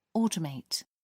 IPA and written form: ˈɔːtəˌmeɪt (automate)